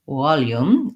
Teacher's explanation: there's a sound that's a little between the W and V, like volume, where you don't have a solid V sound at the beginning. So to get that V sound, regardless of which error pattern you may have based on your native language, you want to feel that your lip and teeth come in contact, that the sound can continue and there's airflow.